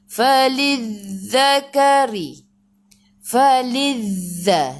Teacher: Za di hujung lidah keluar pada gigi depan. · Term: zal